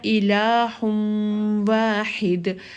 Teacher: نون تنوین کا جو نون چھپا ہوا ہے جب وہ اس واو میں داخل ہوگا تو اس کی کچھ صفت باقی رہتی ہے، یعنی کہ جب ہم ادغام کرتے ہیں یہ والا تو اس نون کا اظہار باقی رہتا ہے، ٹھیک ہے۔